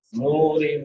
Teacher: نون کے بعد واو مدہ ہے، واو ساکن ما قبل ضمہ یعنی پیش ہے تو اس کو ایک الف کے برابر لمبا کریں گے